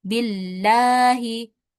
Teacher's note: Kemudian di sini juga ada huruf ba yang berharakat kasrah sebelum lafaz Allah. Maka lafaz allahnya dibaca tipis.